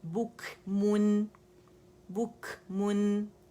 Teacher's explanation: کھ کی ساؤنڈ نہیں، ہا کی ساؤنڈ نہیں آئے گی، کھ نہیں ہوگا، ٹھیک ہے. بک کاف کے مخرج پہ جائیں گے، وہاں پہ جب آپ کاف میں کیونکہ شدہ ہے بک تو وہاں آواز بند ہو جائے گی.